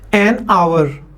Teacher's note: H is also silent in आवर